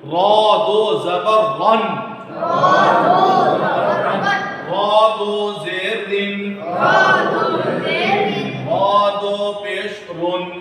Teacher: دو زبر آئے تو اس کی ادائیگی میں بھی پر ہوگی را، اور دو زیر آئے تو باریک، دو پیش آئے تو پر. را دو زبر رن را دو زیر رن را دو پیش رن.